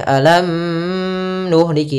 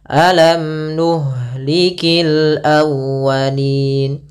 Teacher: Izhar berarti mimnya jelas, tidak boleh ditahan. Tidak boleh alam nuhliki, tinggal, tapi langsung saja alam nuhlikil awwalin. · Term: izhar syafawi